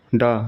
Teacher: यह ट वर्ग का तीसरा सघोष वर्ण है।